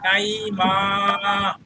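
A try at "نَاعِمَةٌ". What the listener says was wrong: মাতে তো টান হবে না শেষে। না আইমা, নুনে টান হবে খালি, ওতে তো ভাই।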